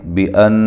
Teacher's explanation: بان نون مشدد پہ غنہ ضروری ہے